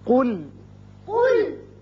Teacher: قاف پر پڑھیں گے، لام باریک